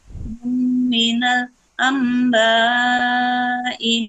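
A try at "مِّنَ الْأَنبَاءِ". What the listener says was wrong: Minal amba, ditahan Bunda. Lebih lama lagi.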